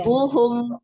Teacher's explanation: rabbuhum itu mim bertemu ba lebih panjang gunahnya karena dia ada gunahnya kan.